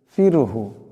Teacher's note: ফা সাকিন এর ডানে জের আছে রাকে পাতলা আওয়াজে পড়তে হবে